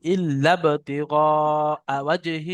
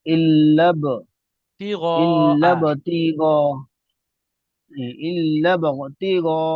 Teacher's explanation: ইল্লা আবতিগা ইল্লাব, লামটা গিয়ে ডাইরেক্ট বার সাথে যোগ হবে